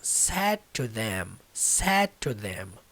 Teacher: O D literalmente não vai sair nessa pronúncia.